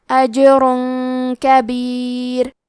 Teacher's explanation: قلقلہ کا معنی ہے حرف ساکن کو ہلانا، تو ہم یہ حرف کو ہلاتے ہوئے یہ کلمہ کو پڑھیں گے۔ اجر، آخری میں را پہ تنوین پیش ہے، پھر حرف الکاف آتا ہے کلمت کبیر، یہاں حکم ہے اخفاء، تو ہم یہ حکم کو غنہ کے ساتھ ادا کریں گے۔